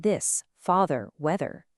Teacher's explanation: a hard, buzzy, vibrating sound, the voiced one, like in this, father, weather.